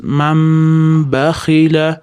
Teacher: Qachon nun ni ustida mim kelsa demak nun ni o'rniga mim o'qish kerak. Man b da ham g'unna bor. Ozgina g'unna berib ya'ni ushlab turamiz.